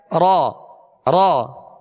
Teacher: اس میں مشابہت تکرار ہے، ہلکی سی کپ کپاہٹ جسے رعشہ کہتے ہیں، ہلکی سی کپ کپاہٹ پیدا ہوگی